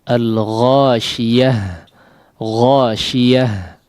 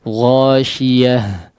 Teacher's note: dilepas udaranya ya, atau suaranya dilepaskan ya dalam pengucapan huruf ta marbutah yang menjadi huruf ha ini. Ghashiyah ya, ya, ya, ya, dialirkan si udaranya.